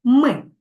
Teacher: звук м за допомогою губ у роті утворюється перешкода уривчасто Отже це не голосний звук а а приголосний звук на